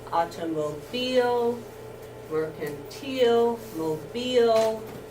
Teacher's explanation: With I-L-E saying ill, fertile, hostile, docile, fragile, usually unaccented. Down here, I-L-E saying eel, automobile, mercantile, mobile, accented.